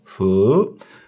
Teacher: the he is second tone. So it's like it has a rising nature. It's like you're asking a question.